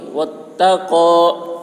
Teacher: قاف کی آواز موٹی